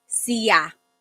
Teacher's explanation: There are some regions in the Philippines where sha is pronounced sia.